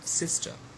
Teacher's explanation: the first syllable is stress and the second is not stressed